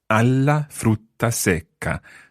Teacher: the a joins the la, and you get an extra L in there, so you need to bounce the consonant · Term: bouncing consonants